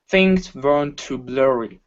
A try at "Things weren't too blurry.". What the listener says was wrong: Okay, give me a good W instead of vern. Okay, it's an oo sound. Oo'ern't. Things weren't too blurry.